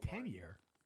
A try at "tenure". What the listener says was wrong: Tenure. Not 10-year. Tenure.